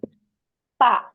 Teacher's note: உதடுகள் 2ம் தன்னைத்தானே இணைந்தும் 2 இதழ்களும் ஒற்றணும். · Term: பாமா